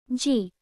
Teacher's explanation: Similar to G in the English go. Softened to approach a K sound.